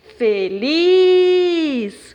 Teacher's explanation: como a última sílaba é a mais forte, então é uma sílaba oxítona.